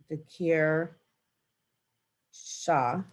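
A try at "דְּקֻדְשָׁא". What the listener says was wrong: Dikud shah. It's a dalit. Dikud shah.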